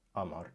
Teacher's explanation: the qa is being pronounced as a hamza, as a glottal stop, Amar, instead of qamar.